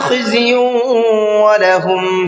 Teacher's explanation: یا کے اوپر تنوین ہے اور تنوین کے بعد میں واو ہے، یہ بھی ادغام یرملون کا قاعدہ ہے، یہاں پر بھی غنہ کر کے پڑھیں گے